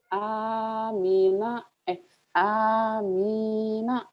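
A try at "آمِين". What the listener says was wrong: Amina. Amin. Amin gitu. Jangan Amina, jangan gitu ya. Jangan acara teh rosker budak.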